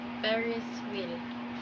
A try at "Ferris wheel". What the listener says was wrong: You pronounce the word F into P. You say Ferris wheel. You instead of Ferris wheel, you will say Ferris wheel.